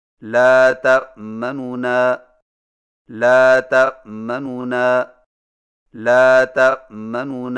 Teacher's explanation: دو نونوں سے پڑھیں، لیکن پہلے نون کی پیش کو جلدی سے پڑھیں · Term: اختلاس